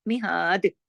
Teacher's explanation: مہاد، دال کو ہلا دیا نا کیونکہ ہم رکے ہیں نا، دال کا ہم نے پیش نہیں پڑھا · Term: کلکلا